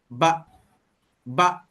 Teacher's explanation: huruf yang bersifat syiddah, dia akan tekan brek terus berhenti